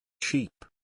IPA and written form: ʃiːp (Sheep)